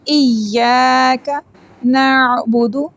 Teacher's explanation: عین کو حلق کے درمیان والا حصے سے پڑھیں گے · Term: حروف حلقی